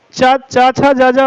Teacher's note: तालू की सहायता से क्या हो जाता है च वर्ग